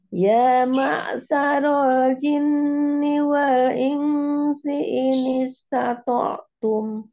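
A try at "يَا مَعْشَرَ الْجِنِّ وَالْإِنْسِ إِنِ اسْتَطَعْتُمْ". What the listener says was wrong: Ya, shin sama si bedain. Sya, sya dengan si. Coba.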